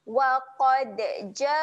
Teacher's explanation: Ja kita akan panjangkan sebanyak empat harokat.